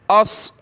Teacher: इसकी जगह आपने सीन नहीं पढ़ना, एस नहीं पढ़ना, अस मोटा करें। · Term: सौद को मोटा